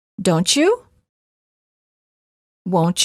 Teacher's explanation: t plus y is usually pronounced as chu as in church